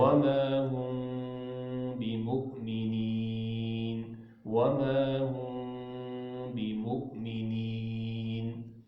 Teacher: اخفا میم ساکن ہوتا ہے، ناک میں آواز جائے گی. ہم یہ ہونٹ ہے نا، یہ بند بھی نہ ہو اور کھلے بھی نہ ہو، اتنے کھلے ہوئے ہوں جس طرح پیپر نہیں ہے.